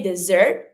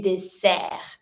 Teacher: you really do pronounce your S like a S sound and not a Z sound. So you don't say dessert, you say deser.